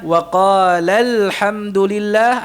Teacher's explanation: kita pendekkan lamnya sambil kita tekan suaranya